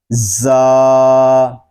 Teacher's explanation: یہ حروف صفیریہ میں سے ہے، اس کو ادا کرتے وقت سیٹی کی آواز نکلے گی۔ زا، یہ حرف زبان کی نوک اور دونوں دانتوں کے اندرونی کنارے سے ادا ہوتا ہے۔